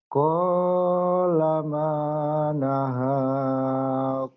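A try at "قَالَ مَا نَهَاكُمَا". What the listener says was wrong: Kunya pendek, kenapa ponco? Pendek. Kunya pendek. Kunya pendek. Qala manahakuma.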